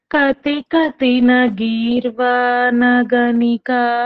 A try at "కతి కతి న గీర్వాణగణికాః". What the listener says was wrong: ఇక్కడ విసర్గం లేదమ్మా, విసర్గం పెట్టుంది. గణికా విసర్గం కతి కతిన గీర్వాణ గణికాహ అని ఉందా?